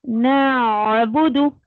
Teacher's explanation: आइन साकिन है, वही हलक में ही आवाज को स्टक करिए, उसके बाद बा का मखरज जब तक नहीं निकालती हैं जब तक आपको उसी पर रहना।